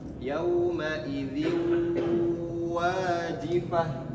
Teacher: ada tanwin, kasrah tain bertemu dengan huruf waw, maka idgham bi gunnah juga. Cara bacanya sama ya, dimasukkan kemudian ditahan.